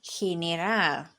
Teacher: And also, general ends with a consonant, which is L, the letter L. And so, our stress is going to fall on the last syllable, ral. He, ne, ral.